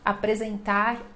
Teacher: esse R final, ele é bem sutil, bem suave, quase sumindo, mas não some totalmente